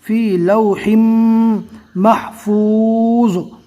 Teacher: دو زیر کی تنوین جزم سے بدل جائے گی رکنے کی حالت میں